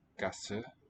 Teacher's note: you can hear how it's a shorter vowel than the first one in Straße